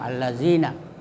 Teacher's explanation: maka lamnya tidak dibaca karena dia diumpamakan bintang, allazina. Jadi langsung dibaca huruf sesudah lam dengan pakai tasdid. · Jadi langsung dibaca huruf sesudah lam dengan pakai tasdid. Ya, jadi cara membacanya dengan mengidamkan, idghamkan atau mentasdidkan, ya, salah satu huruf dari huruf syamsiah.